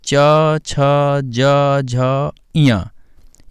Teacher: चा वर्ग में च, छ, ज, झ, इया ये तालु का स्पर्श करते हुए बोले जाते हैं